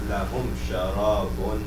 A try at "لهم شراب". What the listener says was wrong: not just لهم. لهم حط هذه شوية غنة.